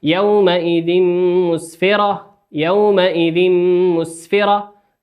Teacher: تنوين أتى بعده حرف الميم، والميم من حروف الإدغام بغنة مقداره حركتين، مقدار غنته حركتين.